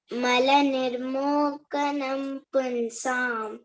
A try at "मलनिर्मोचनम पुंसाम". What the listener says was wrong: निर्मोचनम. It is C written, but it is C should be pronounced as cha. CA is cha here. Malanirmochanam punsam